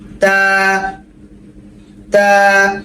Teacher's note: তা জিহ্বার আগা। আমাদের এই জিহ্বার আগা সামনের উপরে দুই দাঁতের গোড়ার মধ্যে লাগবে